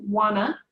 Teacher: want to often sounds like wanna going to sounds like gonna